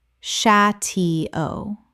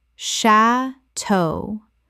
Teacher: Two syllables with the stress on the second.